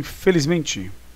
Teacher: felizmente, o MEN é a sílaba tônica